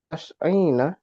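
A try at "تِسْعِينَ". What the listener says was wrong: Nah, kasrah juga 10 90. Tis aina.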